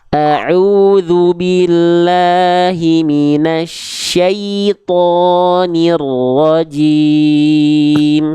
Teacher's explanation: Jelaskan kenapa bunyi ya sukun ketika kasroh itu ketika sukun itu bunyinya ke i, karena dengan otomatis kalau kita melafalkan ya sukun dari makhrajnya yaitu tengah lidah mengarah ke langit-langit itu bunyinya i jelas